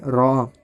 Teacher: را کا مخرج ہے زبان کا کنارہ متصل پشت زبان جبکہ ملے ثنایا اور ربائی کے مسوڑوں سے، یا ثنایا اور ربائی کے مسوڑوں سے مراد ثنایا علیہ اور ربائی ہے۔